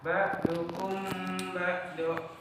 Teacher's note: apabila ada mim mati bertemu huruf ba, maka dibaca mimnya ditahan 2 harokat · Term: Ifat Safawi